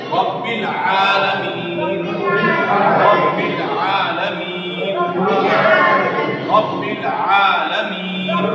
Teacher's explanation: عین، عین بیچ حلق سے، حلق کے 3 حصے ہیں. یہ شروع کا حصہ ہے، یہ مڈل درمیان کا، یہ نیچے کا.